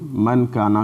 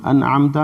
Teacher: نون کو اپنی خیشوم میں چھپا کر کے پڑھتے ہیں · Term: اخفا